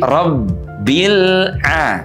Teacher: Huruf ba itu tidak dibaca dengan suara mengalir. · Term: sifat syiddah